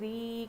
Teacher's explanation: را پر زیر ہے تو اس کو ہم باریک پڑھیں گے، اور یہاں پر یا مدہ ہے، را یا زیر ری کھینچ کر پڑھیں گے۔